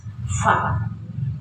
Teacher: masih banyak yang suka baca Pa jadi Fa ada tiupan perut bibir bawah dengan ujung gigi depan atas